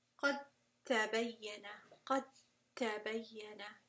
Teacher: No dal sound there, and certainly no qalqala either.